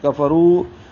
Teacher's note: کاف فا کو جلدی پڑھیں گے، را موٹا پڑھیں گے، رو واو مدہ ہے، اس کے بعد دوسرے کلمے میں حمزہ ہے تو مد منفصل ہوگی.